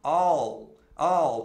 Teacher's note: é o dark L que a gente fala, quando a língua vai para trás, quando você pronuncia o L, não é igual o L do português.